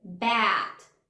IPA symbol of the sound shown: æ